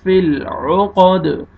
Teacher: عو، عین کو صحیح اپنے مخرج سے ادا کرنا ہے، قاف کو موٹا کرنا ہے، دال پہ قلقلہ ڈبل ساؤنڈ آئے گا